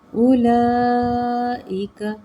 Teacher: یہاں پہ مد متصل کی مقدار یعنی کہ 3 سے 4 حرکات ہم نے اس کو اچھی طرح سے کھینچنا ہے، بلکہ 4 سے 5 حرکات مد متصل ہے۔